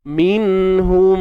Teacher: walaupun dibaca ataupun dinamakan izhar, tapi unsur dengung yang sedikit tu tetap ada. Minhum belakang tu. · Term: izhar syafawi